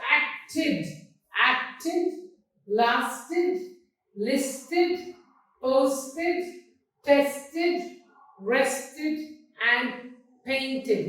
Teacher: So you have d like dodged, t like kicked and it like acted.